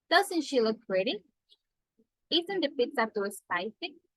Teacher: Falling tone to make a comment.